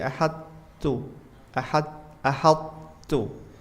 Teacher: Jadi, kita baca dimasukkan ke ta langsung, tapi sifat huruf th-nya masih ada. Jadi kita tempelkan lidahnya ke atas sedikit. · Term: Idgham tapi tidak sempurna